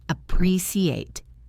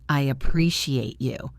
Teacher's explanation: Appreciate has the stress on the second syllable.